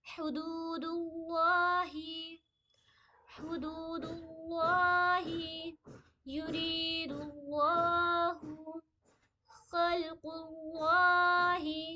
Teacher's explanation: اللہ کے نام سے پہلے اگر پیش بھی آ جائے تو اللہ کے نام کو پر پڑھی جائے گی